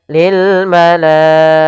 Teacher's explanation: la harus kita panjangkan sepanjang 4 harokat karena atau 5 harokat karena dia mad wajib muttasil.